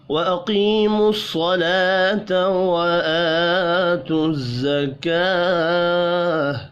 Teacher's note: لام کے اوپر کھڑی زبر ہے، ایک الف کے برابر کھینچ کر پڑھیں گے